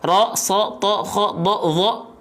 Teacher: ada huruf yang dia berharokat fathah yang harusnya A dia berubah menjadi O. Contohnya huruf ro, so, to, kho, do, zo ya, dan yang lainnya itu berarti dia huruf yang tebal.